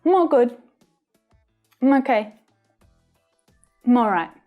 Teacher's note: because we had a consonant sound at the end of I'm, in natural pronunciation, we link that consonant sound to the vowel sound following.